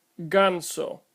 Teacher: The hard G sound is made by placing the back of the tongue against the soft pallet found between the hard pallet and the opening to the nasal cavity. The back of the tongue is prohibiting air flow and thus no sound is made until it is released. This is the obstruction that defines this letter as a consonant.